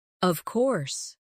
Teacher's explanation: When they are certain, their voice goes down strongly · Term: intonation